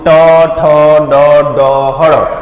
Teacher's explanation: જો ટ ઠ ડ ડ હળ, તો તાળવા અને દાંત વચ્ચેનો ભાગ છે એને મૂર્ધન કહેવાય, એટલે કહેવાય મૂર્ધન્ય